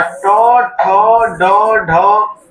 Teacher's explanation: ट, ठ, ड, ढ, ये जो है इसमें जीभ उल्टा जाकर ऊपर सटेगा मूर्धा में।